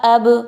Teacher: با جو ہے اس کو قلقلہ کی وجہ سے ہلایا